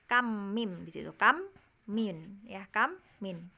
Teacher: tema dengungnya itu mim ketemu mim. Ya, kam mim di situ, kam min ya, kam min, mim ketemu mim. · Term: idgham mimi